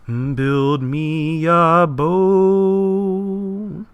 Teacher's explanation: There's no stress on build, and really no stress on me or on or a. It goes right to boat.